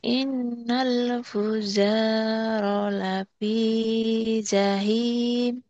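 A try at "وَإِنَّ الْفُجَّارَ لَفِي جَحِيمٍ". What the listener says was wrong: Jimnya belum keras tuh.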